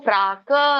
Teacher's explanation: ಕ ಕೆ ದೀರ್ಘ ಇದೆ ಪ್ರಾಕ್ ಅನ್ಬೇಕು